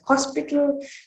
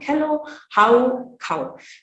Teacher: The h sound is replaced by a sound that is closest to the k sound in Tamil.